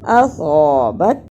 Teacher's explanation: صاد کی جگہ پہ سین کی آواز نہیں آنی چاہیے